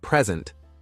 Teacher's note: in the word present stressing the first syllable gives you a noun a gift while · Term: word stress